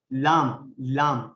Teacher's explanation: زبان کے اگلے حصے کو اوپر کے سامنے والے 6 دانتوں اور داڑوں کے مسوڑوں سے اچھی طرح لگانے سے ادا ہوتا ہے لام